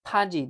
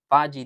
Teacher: Xo'p, biz aytdik, mana bu b harfimiz agar so'zi boshida kelsa p o'qiladi, o'rtasida kelsa b o'qiladi dedik. Bu yerda so'zi boshida kelyapti, shuning uchun paji deb o'qiymiz.